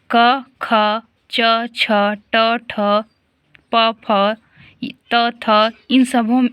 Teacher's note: इन सभियों में कंपन पैदा नहीं हो रहा है, तो ये सभी अघोष वर्ण हो गए